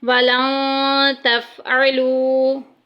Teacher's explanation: वलन तफ़अलू, वाव साकिन पीछे पेश आ गई, वाव मद्दा का कायदा जारी होगा, एक अलिफ के बराबर लंबा करेंगे